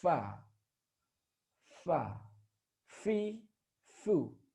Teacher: dikeluarkan dengan cara menyentuhkan dua gigi seri atas kita dengan bibir bawah bagian dalam